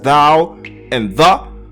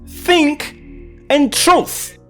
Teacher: the th sound is either voiced in words such as thou and the or unvoiced in words such as think and truth